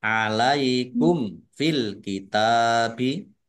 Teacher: mim sukun bertemu dengan huruf fa bacaan idhar safawi dibaca jelas